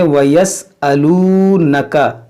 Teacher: ना ये नून खींचेंगे ना ये काफ खींचेंगे क्योंकि ये दोनों हर्फ मुतहर्रिक है। ये वाव मद्दा है इसको खींचेंगे · यहाँ आप देखें वयस्अलू, ये वाव जो मद्दा है, वाव साकिन से पहले पेश हो तो ये वाव मद होता है और इसको एक अलिफ के बराबर खींच के पढ़ना होता है